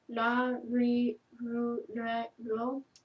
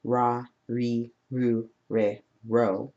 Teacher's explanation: It's not ra, ri, ru, re, ro. It has a softer R that is somewhere in between the L sound and the R sound.